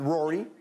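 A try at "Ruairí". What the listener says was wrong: Well, we would pronounce it Rory. So a bit more of a U sound, but it is the Irish for Rory.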